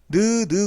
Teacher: 자, 그래서 예를 들어 가지고 이 혓소리인 니은 같은 경우에는 자, 입천장 봤을 때 느라고 하는 걸 소리를 내보면 느 그러면 입천장 요렇게 있으면 자, 공기가 목구멍을 통해서 요렇게 나오다가 느 그러면 혀가 요 부분에 닿으면서 윗잇몸하고 혀끝 여기에 닿으면서 이렇게 입천장에 닿으면서 눌립니다